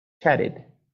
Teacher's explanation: we get a real ED, sort of. We get a schwa, chatted. Really, we say a type of R there too.